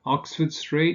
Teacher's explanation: Oxford Street you stress the first word the first element